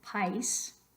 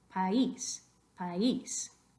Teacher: It's got all the makings of a diphthong, but you don't want it to be a diphthong, so you have to break it up. Acento escrito sobre I, país, país.